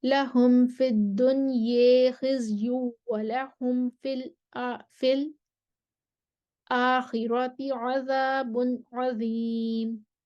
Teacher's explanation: خلف کا امالہ آئے گا دنیا پر، عدم غنہ ہوگا اور فی الآخراتی پر سکتہ آئے گا